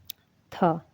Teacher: ये स्पर्श ध्वनि है, अघोष भी है और महाप्राण भी है